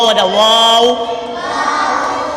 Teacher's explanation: واو واو، دونوں ہونٹوں کی گولائی سے ادا ہوتا ہے، دونوں ہونٹ جب گول ہوتے ہیں تو واو ادا